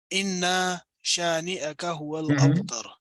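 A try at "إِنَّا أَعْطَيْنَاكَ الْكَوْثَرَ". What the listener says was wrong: آپ اس انا میں اور اس انا میں قرأت کا فرق تھوڑا سا کریں. اس کو ذرا لمبا پڑھیے.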